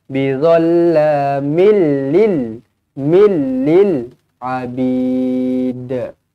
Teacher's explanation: Tanwin tak selari bertemu dengan lam idgham bila gunnah, tidak dengung. Dia memasukkan tapi dia tak dengung.